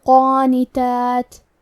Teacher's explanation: قاف حروف الاخفاء میں سے ہے تو ہم یہ حکم کو غنہ کے ساتھ ادا کریں گے، اور کیونکہ قاف حروف التفخیم میں سے ہے تو ہمیں یہ غنہ کو بھاری آواز میں ادا کرنا ہے